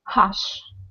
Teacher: So this is voiceless. The sh sound is in your mouth and not in your throat.